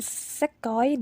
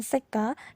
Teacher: sekoi dan seka itu dapat dibedakan dengan adanya fonem difrong oi